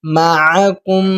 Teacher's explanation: میم پر شد ہے تو گنہ کرنا ہے